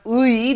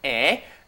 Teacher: The original pronunciation is 의, but since that's very hard to pronounce, people say 에.